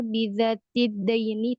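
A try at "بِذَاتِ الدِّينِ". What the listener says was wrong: Bidzatid din, bukan dain. Din, bukan dain.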